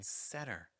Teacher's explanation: N plus T makes a silent T sound in American English, like in center.